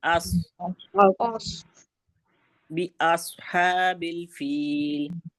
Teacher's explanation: اس حمزہ کو موٹا نہیں کریں گے، ٹھیک ہے، سواد کو نکالیں گے